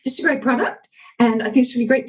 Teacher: you're going up at the end of every sentence very annoying